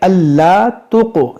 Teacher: یہ قاف میں قلقلہ کریں گے